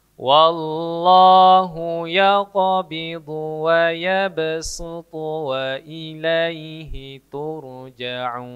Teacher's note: semestinya su tebal. Tapi ini su pakai sin biasa